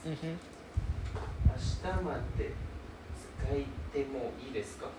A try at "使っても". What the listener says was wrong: Why got E sound? Is it 使いても? 使っても.